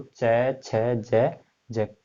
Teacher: जिन व्यंजनों के उच्चारण में स्पर्श का समय अपेक्षाकृत अधिक होता है और उच्चारण के बाद वाला भाग क्या हो जाता है, संघर्षी हो जाता है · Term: स्पर्श संघर्षी व्यंजन